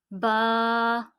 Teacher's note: बा दोनों होंठों के तर हिस्से से अदा होता है।